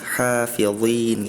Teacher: Tadi huruf zha-nya terdengarnya seperti huruf zai, zai.